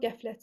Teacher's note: Qəflət sözündə vurğu ikinci ənin üzərindədir.